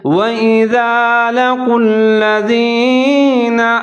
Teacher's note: زال کو نرمی سے پڑھنا ہے الذین، اور لام کے اوپر شد ہے تو واو کو لام کے ساتھ ملائیں گے